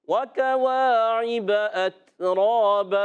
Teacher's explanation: 2 زبر کی تنوین کو الف سے بدلنا ہے